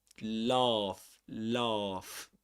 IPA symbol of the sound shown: ɑː